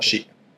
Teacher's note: So that's like a little glottal stop at the end there that you're indicating after the she.